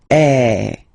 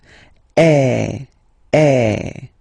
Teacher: normally your mouth should be opened a little bit more than with the accent aigu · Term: accent grave